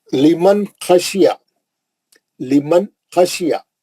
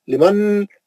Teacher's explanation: جتنا چھوٹا پڑھے نون کو اتنا صحیح رہتا، اتنا اظہار اچھا ہوتا. آپ ذرہ بھی لمبا کرے نا نون کو، لمن بول دیے تو غلط ہوگا، غنہ ہو جاتا.